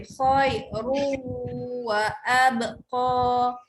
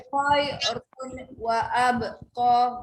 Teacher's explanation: Nun tu buang, tak nak bunyi n tu masuk bunyi waw